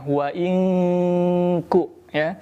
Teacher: Dari awal ayat wa in kuntum yang perlu diperhatikan, wa in ku nun sukun bertemu dengan huruf kaf, maka dibaca dengung dan dibaca samar. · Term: ikhfa hakiki